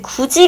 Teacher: 디귿, 티읕으로 끝나는 자음 다음에 형식 형태소인 이모음이 오면 지읒, 치읓으로 변하는 구개음화가 일어납니다.